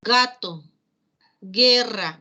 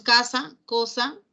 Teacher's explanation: si la lengua la parte posterior de la lengua se dirige hasta esta parte posterior del paladar tenemos los sonidos velar